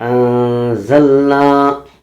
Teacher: نون ساکن کی آواز کو ناک میں چھپانا ہے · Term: اخفاء حقیقی